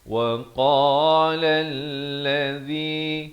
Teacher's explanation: qa makhrajnya di pangkal lidah. وقال الذي zi di hujung lidah.